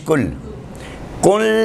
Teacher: اب لام سے پہلے نون ساکن آ گیا، یعنی لام مشدد ہو گیا، تو یہاں پر غنہ نہیں ہونا ہے